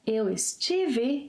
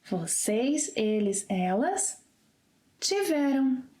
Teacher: you will hear most Brazilians omitting the initial es. So instead of eu estive, you may hear eu tive.